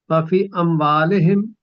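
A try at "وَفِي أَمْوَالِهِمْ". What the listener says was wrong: لمبا کریں، وفی اموالہم.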